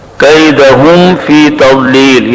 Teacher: کیدہم کے میم میں غنہ نہیں ہے, اظہار شفوی ہے. فی تضلیل, واو کے اندر زبان کی کروٹ اور اوپر کے 5 داڑیں, ان کا مخرج ہے.